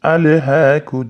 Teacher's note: alha deb turib kumut takaturazur deb bo'lib yubormaymiz alhahumut takatur shha qalamdan bundoq qilib ko'rsatib ketganman e'tibor beringlar bu yerda birinchi mana hamza bilan alif kelyapti lam sukunli kelyapti ya'ni ali deb qalqala qilmaymiz